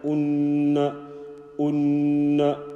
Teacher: Noon has got a shadda, so we will make a gunna sound.